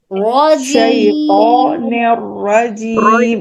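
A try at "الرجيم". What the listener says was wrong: رجیم رجیم نہیں رجیم، double voice نہیں آنا را کی، صرف را رجیم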